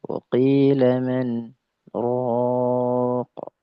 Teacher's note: Harusnya secara hukum dia idgham bi ghairi gunnah. Ya, akan tetapi ada saktah di sana, maka dia wajib saktah